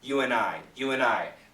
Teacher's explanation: most people say you and I you and I the n kills the D